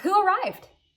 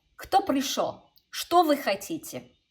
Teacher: You actually should go down in your intonation. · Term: downward intonation